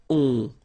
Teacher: Okay. Remember, you don't pronounce the final s, you get the on sound. Okay. Nasal in your nose.